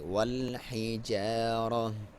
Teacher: اگر آپ نے وقف کرنا ہے تو یہاں پہ تا کو نہیں پڑھیں گے بلکہ ہا کی ساؤنڈ کے ساتھ پڑھیں گے